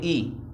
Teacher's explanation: मुख द्वार लगभग इसमें पूरा बंद ही रहता है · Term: संवृत